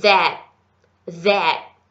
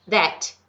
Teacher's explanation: O último som morre no céu da boca.